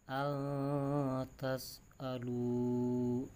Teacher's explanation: nun sukun bertemu ta, hukumnya ikhfa, jadi dibaca samar, dibacanya al-tas alu, ya dibaca samar.